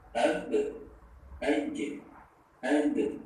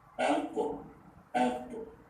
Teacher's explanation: Ketiga, cara membaca qalqalah qofto dan juga ba jim dal itu berbeda. Kalau ba jim dal itu ditipiskan, sedangkan qaf dan to ditebalkan, sehingga terdengar perbedaannya.